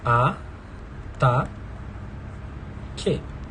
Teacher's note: Tá na segunda sílaba, porque ele é um vocábulo paroxítono.